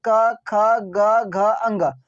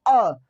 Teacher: अब क वर्ग का उच्चारण कहाँ से होगा? तो कंठ से होगा।